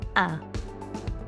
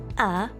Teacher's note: the sound is a nice open ah